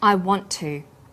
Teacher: The final t sound in want is held slightly longer on the tongue. Then to is pronounced. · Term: consonant plus same consonant linking